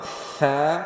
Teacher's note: اس کے صحیح ہونے کی، صحیح پڑھنے کی، پڑھے جانے کی نشانی یہ ہوتی ہے کہ اس میں سیٹی کی آواز نہیں آتی · آج کی تجوید قرات میں ہمارا لیسن ہے، با تا کے بعد آتا ہے سا، اس کو اس طرح کی سیٹی کے ساتھ نہیں پڑھتے، بلکہ اوپر والے نیچے والے دونوں دانتوں کے درمیان میں زبان کو تھوڑا سا رکھ کے تو ہم سا پڑھتے ہیں